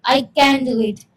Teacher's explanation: Rise, fall, patterns showing enthusiasm.